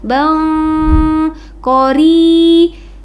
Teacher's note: Bang itu disebut dengan ikhfa hakiki, harus disamarkan bacaannya ke huruf qaf.